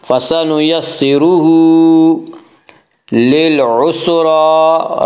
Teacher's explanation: را کے اوپر کھڑا زبر ہے، کھڑا زبر کو ایک الف کے برابر کھینچ کر پڑھیں گے۔